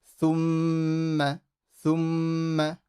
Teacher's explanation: So don't do a ghunna and an alif. Just do a ghunna and then no alif